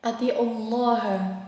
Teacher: karena lam jalalah tebal ya, karena domah bertemu dengan lam jalalah, yaitu dibaca tebal pada lafaz Allah ya. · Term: tafkhim